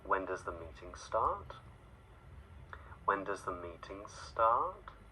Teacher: it would be a change in pitch a Glide in the pitch of our voice upwards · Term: rising intonation